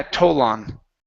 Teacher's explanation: I know the L is difficult to say at the end of words, okay, take the L and connect it to the next word.